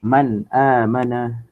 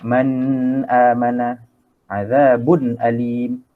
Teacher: Kita matikan secara sempurna nun mati ataupun tanwin tu, tanpa ada sebarang dengung ataupun kita ikhfakan dia. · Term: izhar halqi